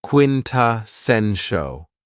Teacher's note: this word has four syllables and the stress is on the third syllable.